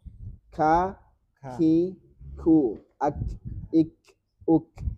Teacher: K ini gak sekencang itu anginnya. Gak sekencang yang lain ya.